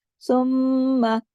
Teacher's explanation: सुम्मा मीम पे तशदीद है, बड़ा गुन्ना होगा।